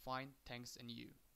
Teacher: Notice the rising intonation on and you. This shows that interested in what Jane has to say.